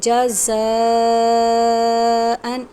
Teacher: یہاں پر مد متصل ہے، یعنی حمزہ اسی کلمے میں ہے تو بڑی مد ہے، اس کو ہم نے 5 الف کے برابر لمبا کرنا ہے